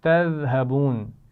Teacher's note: ذال ہے تو اس کو نرمی سے پڑھا جائے گا، سیٹی کی آواز نہیں آنی چاہیے